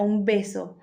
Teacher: antes de P y B va M debido a la asimilación